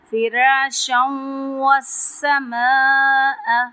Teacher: یہاں پہ نون تنوین کی آواز آئے گی، تنوین کی آواز جو ہے نون سے بدل جائے گی، اور اس کو واو کے ساتھ جب ملا کے پڑھیں گے تو یہاں پہ بھی ہم غنہ کریں گے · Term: ادغام